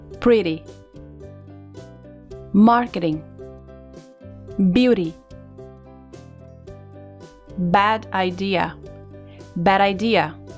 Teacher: no inglês americano muitas vezes o t e o d junto com o som de uma vogal vai soar como a letra R como o nosso R nas palavras arara barata caro veja alguns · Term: Flap, flap T